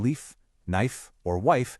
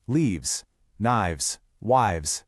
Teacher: For a lot of these nouns, we swap that sharp F sound for a softer V sound by changing the end to V's. · That sharp F sound in leaf, knife, or wife, it just softens into a V sound.